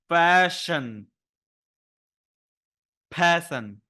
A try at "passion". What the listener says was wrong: I like the P. I like the A. You're losing the SH in passion. Passion. You're giving me passion, and I went passion, like we were pushing. Say for me, fashion, passion.